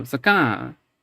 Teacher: So you can hear it's a nasalized rhyme, right?